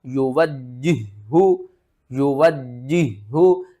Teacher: ہا کو بھاری آواز کے ساتھ ادا کرنا ہے. ہا حروف حلقی میں سے ہے اور حلق کے سب سے نیچے والے حصے سے ادا ہوگا. واو کو جیم کے ساتھ ملانا ہے، جیم کے اوپر سختی کرنی ہے، پھر اس جیم کو دوسرے ہا کے ساتھ ملانا ہے اور دوسرے ہا کو ہم نے 2 بار پڑھنا ہے اور سختی کے ساتھ پڑھنا ہے.